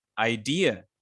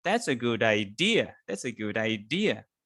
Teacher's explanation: Because idea is basically, if you pronounce it correctly or properly, it will sound something like idea. So you stress dear, idea.